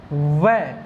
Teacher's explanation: दंतोष्ठ शब्द में दंत मतलब दांत, ओष्ठ मतलब होठ, जिसमें दांत और होठ का प्रयोग हो। जैसे वै, अब देखो वै बोल रहा हूं मैं, वै, तो होठ और दांत दोनों लग रहे हैं